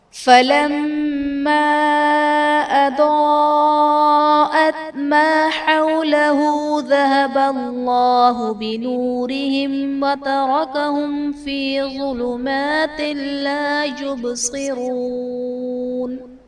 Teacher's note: فلما اضاءت میں میم مشدد ہے، تو یہاں پر غنہ کر کے پڑھیں گے